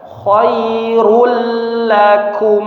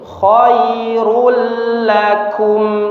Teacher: maka langsung ditasydidkan ke huruf ra dan huruf lamnya dan tidak didengungkan ya, jangan dipanjangkan.